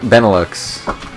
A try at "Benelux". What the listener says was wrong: I thought you don't pronounce the X.